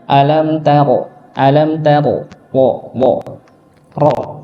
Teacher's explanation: sedikit saja di antara eh getaran ya getarannya cuma sekitar dua getaran saja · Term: huruf ro